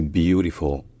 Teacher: l'accent tonique est sur la première syllabe qui est plutôt longue